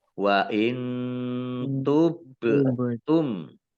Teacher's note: Ba sukun, huruf kolkolah, dibaca memantul, ditampakkan pantulannya. · Nun sukun bertemu dengan huruf ta, bacaan ikhfa, ya, dibaca samar-samar.